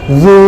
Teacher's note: জিহ্বার আগা সামনের দাঁতের সাথে লেগে বাতাস বের করে দিয়ে বলতে হয়